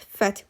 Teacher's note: Burda x, f və t samitləri kar samitlərdir.